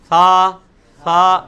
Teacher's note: یہ سا جو ہے یہ اس میں سیٹی کی آواز کو آپ نے اوائڈ کرنا ہے · سیٹی کی آواز کو اوائڈ کرنے کے لیے جو یہ زبان ہے, زبان کا جو اگلا کنارہ ہے, زبان کی نوک, وہ یہ جو اگلے دانت ہیں ان کے کنارے کے ساتھ ہلکی سی اندر کی طرف ٹچ کریں گے تو سیٹی کی آواز خود بخود ختم ہو جائے گی اور بڑی نرمی سے یہ لفظ ثا نکلے گا.